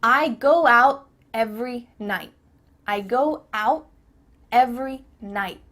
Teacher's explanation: your tongue is at the top of your mouth you're about to make the t sound but no air goes through so it's just stopped at the top of your mouth i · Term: cut off the t